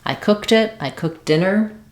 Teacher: We just add the T sound as well for that ED at the end.